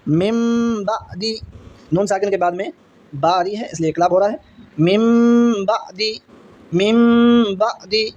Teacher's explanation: इसलिए इसमें ऐसी कोई मुश्किल नहीं है क्योंकि इसका एक हरफ है, याद रखना है बा। नून साकिन और तनवीन के बाद में बा आएगी तो नून की आवाज़ को मीम से बदल कर पढ़ेंगे।